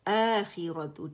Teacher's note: یہ مد بدل ہے، 2 کاؤنٹ کے لیے آواز اوپر جائے گی